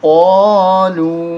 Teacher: بما انزل اللہ، قاف الف زبر قا، لام واو پیش نو، قاف کو موٹا کریں گے